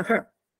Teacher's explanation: non lo pronuncio her ma lo pronuncio her Quindi con una vocale degradata